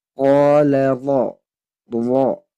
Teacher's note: Huruf ro-nya tebal karena berharakat fathah.